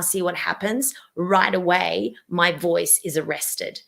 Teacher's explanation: my vocal folds have now squeezed together because of my throat muscle squeezing tension and i can't breathe when somebody speaks with that strangled way